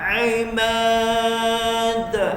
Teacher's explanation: huruf ain tekan pertengahan kerongkong kita yang tengah